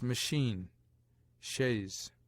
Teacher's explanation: CH, in some French words not yet assimilated, sounds like SH